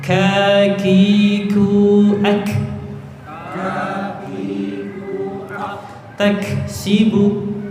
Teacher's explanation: Pangkal lidah bertemu dengan langit-langit, ya, itu keluar huruf kaf.